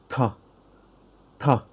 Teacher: is our tongue tip connect to the upper teeth okay but when we pronounce t t as it is an aspirated consonant when you put your palm before your mouth you should feel a very big air flow hit your palm